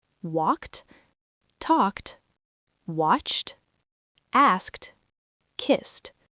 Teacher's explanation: the word walked, we don't say walk-ed with two syllables. We say walked. Like the letter T at the end. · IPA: /t/